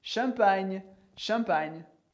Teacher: Champagne, que escreve G-N, mas sempre com som de nha, como se fosse um NH do português